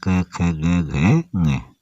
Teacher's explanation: जो क वर्ग होता है उसको बोलते हैं कंठ स्पर्श व्यंजन।